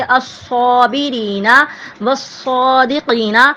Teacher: صاد پہ شد ہے اور اس کو ہونٹوں کی گولائی سے ادا کریں گے